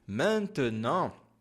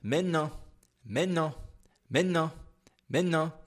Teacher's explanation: se você for falar realmente como francês da vida cotidiana, a gente não pronuncia esse T